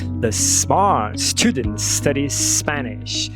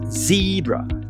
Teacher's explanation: Tanto o S quanto o Z são exatamente o mesmo fonema, eles têm a mesma articulação, mas a diferença é que o S é desvozeado e o Z você vibra a glote, portanto é vozeado